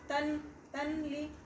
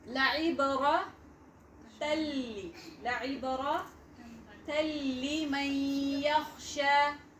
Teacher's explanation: we have to merge fully, complete into lam. The sound of noon into lam. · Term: idgham without gunna